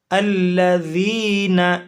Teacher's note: ذال حروف لثویہ میں سے ہے، نرمی کے ساتھ ادا ہونے والے حروف میں سے ہے